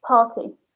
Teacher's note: we call that a vocal R, or where the R becomes a vowel. So we actually don't pronounce it.